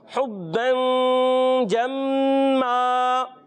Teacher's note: میم مشدد میں 1 الف کا غنہ کریں گے